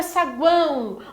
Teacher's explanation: o U e o O, eles são menores, você pronuncia de maneira mais fraca. Então, eles são semivogais. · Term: tritongo